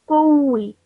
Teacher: when I join the kaf to the waw, I would do so with a bit of stress on the waw. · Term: mushaddad letter